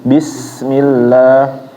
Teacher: kita mengucapkan sin itu harus benar-benar sofir ya Bapak atau tajam bacaannya. Jangan bis ini kurang, sofirnya kurang.